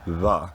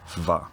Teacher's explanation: what used to be a bilabial fricative va, pronounced with both lips, becomes a labiodental fricative va, pronounced with the bottom lip and top row of teeth